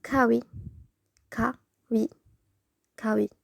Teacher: when giyak is at the beginning of a sentence or word, it's pronounced more like k. And when giyak is at the middle of a word, it's more close to g.